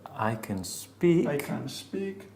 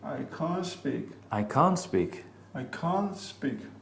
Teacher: The T may easily disappear, and the only difference between the positive and the negative is a different, longer vowel sound in the second.